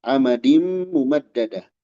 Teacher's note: Tanwin berserta mim ini idgham bi gunna, ya. Amadim ditahan. Amadim mumaddada.